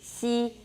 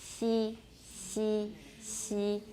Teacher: there's considerable raising of the front of the tongue, and they're made in the post-alveolar region, 就是齿龈后那个区域.